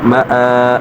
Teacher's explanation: گے، لسانا، وقفا لسانا، میم زبر ما، حمزہ کھڑا زبر آ، کھڑا زبر کو ایک الف کھینچ کر پڑھیں گے